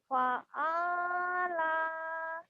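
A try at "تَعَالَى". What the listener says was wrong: Ta. Bukan fa ya.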